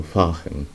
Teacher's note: La R se puede pronunciar de muchas formas, pero en este caso sería una R semigutural, como en el medio de la garganta